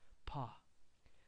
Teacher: this is an a normal English p p p feel free to let all the air out of your mouth